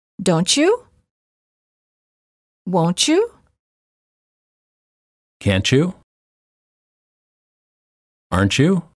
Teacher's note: final t plus Y is usually pronounced as CH as in church